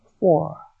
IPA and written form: fɔr (four)